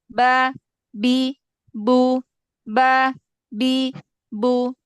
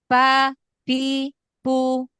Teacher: ba itu dia punya sifat jahar dan syiddah. Jadi baik nafas dan aliran suaranya tertahan benar.